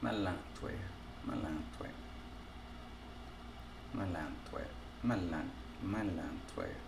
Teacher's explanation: I have to pretend there's an N there to get that nasalization.